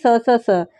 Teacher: उष्म व्यंजन में स स स तीनों स जो होते हैं ये क्या होते हैं अघोष व्यंजन होते हैं